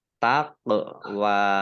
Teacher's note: At-taqwa ini juga alif lam samsiah karena tidak dibaca, langsung masuk ke huruf berikutnya yaitu ta, ditandai taknya ada tasdidnya, taknya dibaca double. Kemudian qaf sukun, bacaan qalqalah atau memantul, ditampakkan pantulannya